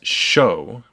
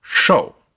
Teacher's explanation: in Mandarin, the pitch of the consonant drops a bit. Sh goes to sh.